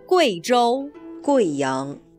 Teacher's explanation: dans le nom de cette province et de sa capitale, le « U » plus le « I » se prononce « Wei » et non pas « Oui »